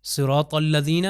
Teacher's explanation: صاد جو ہے موٹا ہوگا، طوئیں بھی جو ہے موٹا ، طا ہم نے کہا کہ اوپر والے دانتوں کے پیچھے